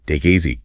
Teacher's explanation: The K sound links to the I and the T sound links to the E. Creates this seamless chain of sound.